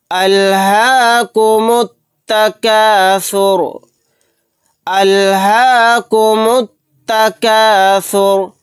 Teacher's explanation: میم کو تا میں ملا دیں گے، تا پر تشدید ہونے کی وجہ سے یہ الف اور لام نہیں پڑھا جائے گا